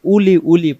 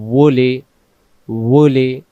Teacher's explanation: সরাসরি যদি আপনি উলি উলি পড়েন তাহলে কিন্তু হলকে চলে যাবে দুই ঠোঁট থেকে আসবে মুখটা গোল ঠোঁটটা গোল করে